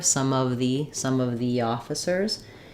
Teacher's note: because officers starts with a vowel we will probably still use we will use an e here